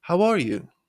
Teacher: Rising your pitch at the end to sound friendlier